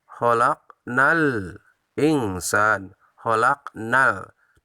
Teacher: Di sana kita rasakan alif lamnya jelas, yaitu alif lam qamariyah.